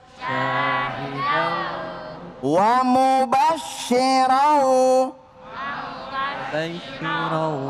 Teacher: Dengungnya di mana? Hidung, khayshum ya kan? Di hidung.